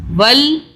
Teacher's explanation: ول لام کی 2 مرتبہ آواز، تشدید ہے لام کے اوپر